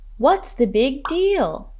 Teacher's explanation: notice the falling intonation in this phrase